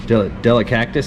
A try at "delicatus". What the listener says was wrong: Delicatous? Delicactus. No, there's no cac. It's C-A-T, not cac. Delicatous.